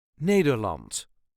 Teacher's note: yes there is an R an r in it but it doesn't have to be pronounced strongly · some even leave that R the r out but we prefer a light R